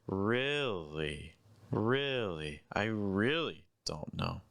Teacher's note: Really is stressed, and it's also the highest pitch, but notice that its pitch goes down in the second half.